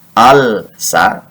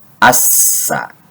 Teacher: ketika alif lam al bertemu dengan sin, maka dibacanya harus diidghamkan, disebut dengan al-syamsiyah. Tidak lagi dibaca al-sa, tetapi as-sa.